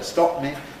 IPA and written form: ˈstɒʔp mi (stop me)